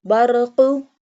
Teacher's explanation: This one Qaf pronounced from the root of the tongue touching the soft part of the palate.